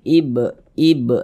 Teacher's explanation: Huruf qalqalah ada 5, salah satunya huruf ba. Kalau dia sukun, pantulkan. Ibe, mantul seperti itu. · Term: qalqalah sughra